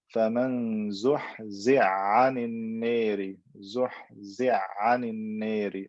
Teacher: I merge the ha into the ayn. They come from the same makhraj, the throat